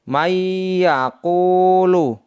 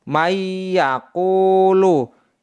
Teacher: sukun bertemu dengan huruf ya cara membacanya sebagai berikut May yaquulu May yang semestinya dibaca Man karena nun sukun bertemu dengan huruf ya maka dibaca May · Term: Idgham bighhunah